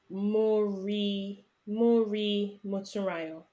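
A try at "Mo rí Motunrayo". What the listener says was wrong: Not Mori. Mori. So can you see there's a difference between the tonation? So the tone, Yoruba language is a tonal language. So you have to be very mindful of how you say it. Not re.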